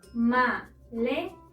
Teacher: Encontramos la sílaba tónica en le, es decir, la penúltima sílaba